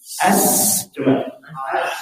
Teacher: saofir itu tajam bunyi napasnya tajam